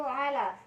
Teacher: Pada kalimat ala terdapat hukum tajwid yaitu matobi'i, cara bacanya itu dibaca panjang 2 harokat.